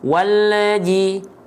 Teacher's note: Banyak orang melafalkan lam dalam kondisi sukun itu mantul. Ada suara tambahan atau disebutnya tawalud. · Kenapa lamnya bisa memantul? Karena ya lidah kita keburu turun duluan sedangkan huruf berikutnya belum dilafalkan. Walji. Nah, L-nya jangan turun dulu sebelum kita melafalkan huruf berikutnya.